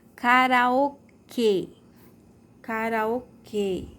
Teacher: o som é fechado e a sílaba mais forte